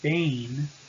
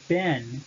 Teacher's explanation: first vowels will tend to shorten